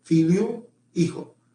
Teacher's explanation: Esta H tenía sonido hace cientos de años ahora ya no tiene sonido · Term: letra muda